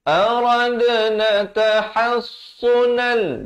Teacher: Di sini ada lantunan qalqalah sughra, dal yang ada tanda mati asli.